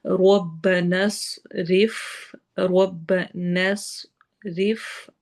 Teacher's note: ہم نے نون کو ہی سواد سے ملا دینا ہے کیونکہ سواد پہ جزم آ رہی ہے ۔ ربنس رف، ربنس رف، روا باریک ہوگا، فا سے ملائیں